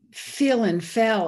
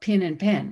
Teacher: a region of the country where fill and fell are basically pronounced the same, or pin and pen